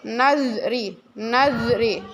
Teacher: ya gigi ya Zal Zal bunyi Z seperti bunyi dalam ya bunyinya lemah ujung lidah menempel pada bawah gigi atas · Bunyi Z seperti bunyi dal, ya, bunyinya lemah, ujung lidah menempel pada bawah gigi atas, zal. Contoh, nazri, nazri, ya, ada seperti desisan gitu, ya, seperti kita mengucapkan huruf ta tadi, nazri, nazri.